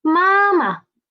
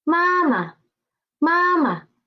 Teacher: And the second ma is a neutral tone.